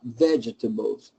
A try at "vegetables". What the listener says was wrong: Good. That was good. The last one was good.